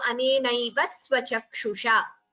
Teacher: there is a dvitvam, a double pronunciation of sa.